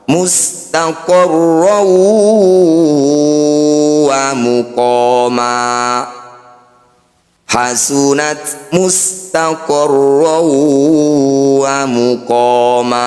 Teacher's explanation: bunyi fathah tanwin masukkan pada huruf waw, dengungkan 2 harokat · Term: idgham bi gunnah